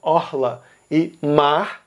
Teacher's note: Rio de Janeiro e Minas Gerais usam o R raspado